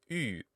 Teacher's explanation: the u sound is a front rounded vowel · So a front rounded vowel, it's the same as E, just rounded, U. It's a possible way to pronounce this sound.